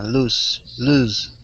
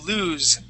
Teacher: lose with the voiced s